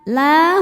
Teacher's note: La hukumnya adalah mad tobi'i muqaddar karena ada huruf lam berharokat fathah berdiri. Cara bacanya dipanjangkan 2 harokat.